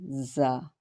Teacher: The articulation point of za is pronounced by the placing tip of the tongue close to the upper front teeth at the edge of the upper gums, allowing air to pass with a slightly buzzing sound